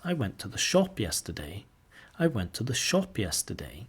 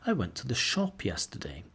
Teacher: Put the sentence stress or the main stress on shop.